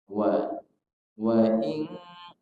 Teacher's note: Wa in kuntum dimulai dengan huruf waw. Huruf waw makhrajnya ada di dua bibir, yaitu dengan indima musyafatain, memonyongkan dua bibir.